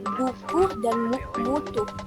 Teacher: lambang fonetis U terbuka dengan contoh bunyi belakang tinggi bulat dengan contoh kata buku dan mutu.